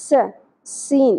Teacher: سین میں سیٹی کی آواز ہونی چاہیے، زبر کو زیادہ نہیں کھینچیں گے